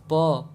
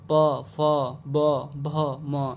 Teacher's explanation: प बोलने में हमारे दोनों होठों को एक दूसरे को स्पर्श करना पड़ेगा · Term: ओष्ठ